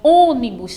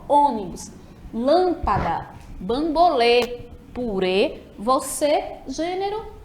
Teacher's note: Já o circunflexo, ele vai ter ali um som mais fechado nas vogais. Então, ônibus, tá vendo que eu não abro muito a minha boca, ônibus, lâmpada, bambolê, purê, você, gênero, entre outras palavras.